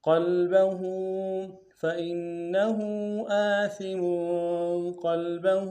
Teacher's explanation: لام سے غنہ نہیں ہوگا، با کو نمشہ ادا کریں گے، ہا کے اوپر الٹا پیش ایک اقدار میں کھینچیں گے